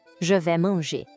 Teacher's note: A gente não pronuncia o S, fica um som de V.